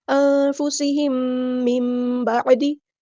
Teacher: میم ساکن کے بعد میم آیا ہے تو یہاں پر ہمارے پاس ہو رہا ہے ادغام شفوی